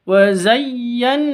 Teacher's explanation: Di sini ada nun tasydid, terus ada tanda berdiri di atas. Nun tasydid, gunnah musyaddada, wa zayyan, dengung seperti itu, 2 ketuk